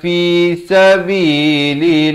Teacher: Dan di sini lafaz jalalah dibaca nipis. Dan bila waqaf pastikan tidak kurang dari dua harakat.